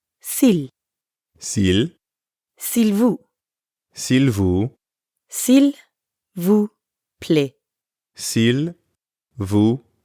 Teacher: when speakers are in a hurry that l sound at the end often gets left off